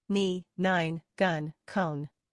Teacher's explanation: And uh use your voice the the sound N comes through your nose